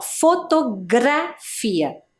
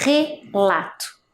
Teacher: a letra R no meio ali da palavra, ela teve um som, ó, fotografia, diferente da letra R no início, relato, né, que é um som mais forte